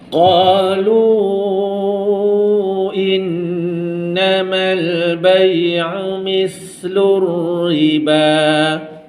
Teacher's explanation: Qalu mad jaiz munfasil baca 4 harakat